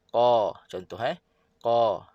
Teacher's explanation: Dan dia tebal lah. Ada pangkal lidah terangkat semasa menyebutnya. Dia tebal dan dia terbuka. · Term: qaf